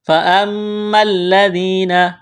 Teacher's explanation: میم مشدد ہے، غنہ کریں گے، آواز ناک میں